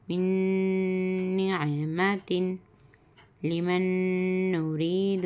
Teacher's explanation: نون ساکن کے بعد نون آ کر ہے گننا کے ساتھ پڑھنا